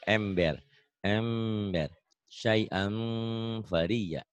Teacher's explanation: Bibir bawah atasnya itu nyakup. Tapi ada bindengnya karena ihfa ya.